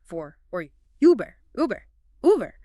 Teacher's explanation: >> Now, keep making that sound, but round your lips tightly as if you're about to whistle or say ooh. The sound is still generated towards the front like e, but the lip rounding changes it.